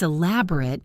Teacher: As an adjective, it's elaborate with a short final syllable.